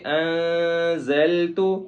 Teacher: نون کے اوپر ساکن ہے جس کی وجہ سے ہم اخفا کریں گے